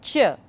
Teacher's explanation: Ch is a palatal sound, palatal, affricate and voiceless.